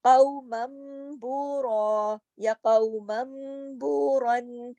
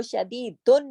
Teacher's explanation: نون ساکن یا تنوین کے بعد اگر با آ جائے تو نون کی آواز نہیں نکلے گی, میم کی آواز نکلے گی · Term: اقلاب